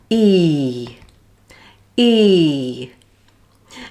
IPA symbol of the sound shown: iː